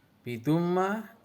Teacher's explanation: idgham bi gunnah karena ada fathah tanwin bertemu dengan huruf mim, atau juga sebagai gunnah musayyadah karena ada mim yang bertajdid, cara bacanya masuk dengan mendengung.